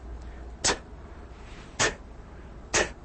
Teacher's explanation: The place of articulation is alveolar ridge.